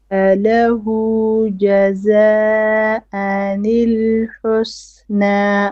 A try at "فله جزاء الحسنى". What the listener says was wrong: The mud here you need to make it longer. This is an obligatory mud, okay?